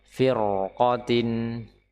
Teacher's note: Meskipun sebelumnya kasrah tapi karena qof-nya di sini adalah fathah maka dia r-nya terbaca tebal. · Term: ra dengan tebal